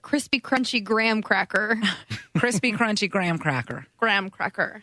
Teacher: she uses the back of the tongue to say the CR sound and the gr sounds instead of the front of her tongue